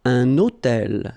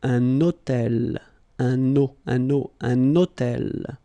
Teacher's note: I'm making this little liaison, this little link between the two